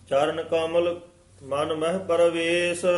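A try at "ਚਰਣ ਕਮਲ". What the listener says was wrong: ਕਿਤੇ ਚਰਨ ਆ ਜਾਂਦਾ ਨੰਨੇ ਨਾਲ, ਇੱਥੇ ਨਾਣੇ ਨਾਲ ਹੈ।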